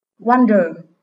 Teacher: Các em lưu ý, đây là động từ có hai âm tiết, nhưng vì âm số 2 chữ ơ, nên trọng âm lại rơi âm tiết số 1.